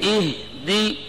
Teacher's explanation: حمزہ کو سخت پڑھنا ہے, ہا کے جزم کو ہلانا نہیں ہے, دال کے زیر کو معروف پڑھنا ہے. اہ دی اہ اہ, یہ آواز کا ہلنا یہ غلط ہوگا.